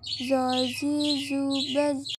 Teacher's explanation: Huruf zo pelafalannya tebal dengan mengangkat posisi pangkal lidah dan lidah bagian depan menutup bagian langit-langit.